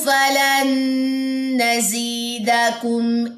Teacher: نون ساکن کے بعد نون آ گیا تو یہاں پہ ادغام مع الغنہ ہے. اس کے بعد یا مد ہے, اس کے بعد دال کی زبر کو لمبا نہیں کرنا.